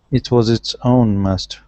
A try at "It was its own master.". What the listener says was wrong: Good, good.